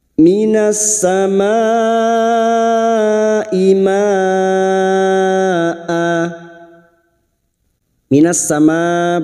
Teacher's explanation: bertemunya Mad dengan Hamzah dalam satu kalimat mad wajib muttasil lima harakat kita panjangkan